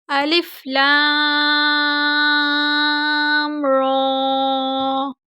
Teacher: لام کو ہم نے زیادہ لمبا کیا کیونکہ اس کے اوپر مد تھا، جبکہ را کے اوپر کھڑی زبر ہے، کھڑی زبر کو ہم نے زیادہ لمبا نہیں کرنا لیکن لمبا کرنا ہے۔